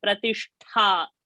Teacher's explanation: Tha Mahaprana and not Pratishta